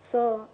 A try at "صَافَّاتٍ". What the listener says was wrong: كمان مرة كده بس نزود مد شوية.